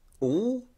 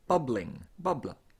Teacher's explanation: It is typically a dark L, all, but when a suffix is added, it can frequently change into a clear L, bubbling, bubbler.